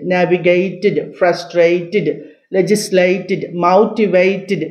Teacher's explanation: whenever you find TED that TED must be pronounced like TID